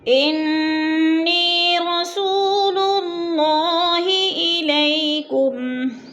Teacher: للہ، اللہ پر پڑھا جائے گا اس لیے کہ اللہ سے پہلے لفظ لام کے اوپر پیش ہے تو اللہ کو پر کر کے پڑھیں گے